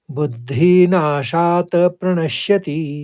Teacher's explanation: प्रणश्यति में प्रणस कहेंगे फिर शति कहेंगे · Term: आघात